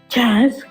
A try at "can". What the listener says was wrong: Can. Say the N at the end. Hold on. Give me the pronunciation. The N at the end. Can.